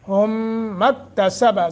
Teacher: کیا ہوگا، غنہ ہوگا، چونکہ آگے میم مشدد ہے، ہم مکتسب، سین سیٹی کے ساتھ